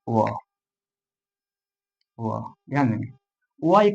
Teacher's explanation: इसका उच्चारण ठीक है कंठ और होठ के मिलने से होता है